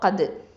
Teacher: தால் சுக்கூன் வந்து நமக்கு தெரியும் கல்கலத்து சுக்ரா